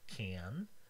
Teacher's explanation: You can feel your tongue touching the alveolar ridge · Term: alveolar nasal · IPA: [kæn]